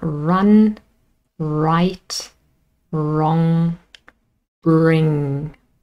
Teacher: there is no contact when we form the sound re and r is also called a voiced alveolar approximant alveolar because that's the place where it is formed in the mouth